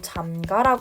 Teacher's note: 잠그 플러스 아 하면은 의가 탈락하는 조건이 달성이 되니까 으탈락 시키고 잠가라 발음이 된다는 거죠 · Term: 의 탈락